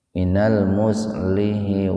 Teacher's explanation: Kalau mau diwasol disambung berarti h-nya dibaca kasroh.